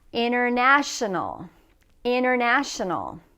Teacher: the T is usually dropped when we're speaking in conversation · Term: drop the T